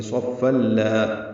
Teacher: ملانے کی صورت میں تنوین کے بعد لام ہے تو ہم ادغام کریں گے